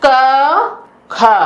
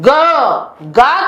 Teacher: गा का जब उच्चारण करते हैं तो एक तरह से झंकार होता है, स्वर यंत्रों में कंपन होता है, और क और ख के उच्चारण में ऐसा नहीं होता है।